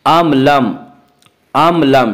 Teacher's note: اظہار شفوی ہوگا، یعنی میم ساکن کو ظاہر کر کے پڑھیں گے